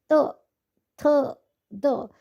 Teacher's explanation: त थ द यानी कि त वर्ग में जितने भी वर्ण है उनका उच्चारण स्थान दंत है। दांत लग रहा है।